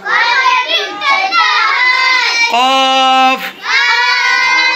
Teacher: জিহ্বার গোড়া একটু আগে বাড়িয়ে তার বরাবর উপরে তালুর সঙ্গে লাগিয়ে কাফ হরফটি উচ্চারিত হয়